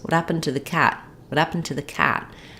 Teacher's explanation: your brain will fill in this H sound of happened and know that it's there · When I'm saying what happened to the cat, or what happened to the files, what happened yesterday, when there's more coming after happened is no longer stressed, and I can drop my H sound. So when I'm saying what happened plus something else, I'm not always going to drop that H, but if I do drop the H, what happened, then I'm going to say my T differently.